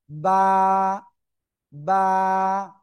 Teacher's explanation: দুই ঠোঁটের ভিজা অংশ থেকে উচ্চারিত হয়